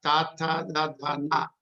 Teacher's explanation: the fourth one is dentals. That is the tavarga, ta ta da da na. There is a interaction with the teeth